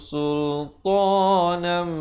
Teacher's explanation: Hi alaikum sultanam, dengungkan di sini 2 harakat. Idgham bi gunnah, tanwin bertemu mim. Sultanam, baru masuk mubina, dan nan bila kita waqaf dia kekal menjadi 1 baris 2 harakat.